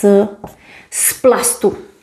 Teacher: P influences z and it becomes s.